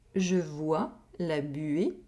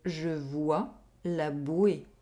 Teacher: Here, we have a difference in semi-vowel sound. We have the [ɥe] sound in the first sentence, and the [we] sound in the second sentence.